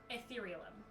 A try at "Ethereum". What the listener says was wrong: Ethereum? You added like 3 extra syllables to that.